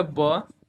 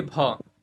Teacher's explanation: ब कम हवा निकलेगा। लेकिन बोलिए भ तो इसमें ज्यादा हवा निकल रहा है।